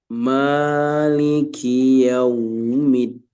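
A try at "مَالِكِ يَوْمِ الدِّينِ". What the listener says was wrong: Jadi jangan kepanjangan namanya Mali. Di ro nanti diperhatikan dilatih agar ada takrirnya, disempurnakan takrirnya.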